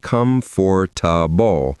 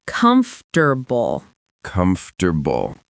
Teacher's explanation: That middle part, forta, kind of disappears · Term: 3 syllables